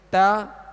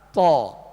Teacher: تا کو باریک پڑھیں گے اور تو کو پر یعنی موٹا پڑھیں گے